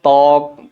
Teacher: শব্দের শুরুতে বফলা থাকলে বফলা উচ্চারণ হয় না